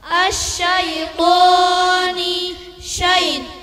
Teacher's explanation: shin keluar dari tengah lidah beserta angin yang tersebar keras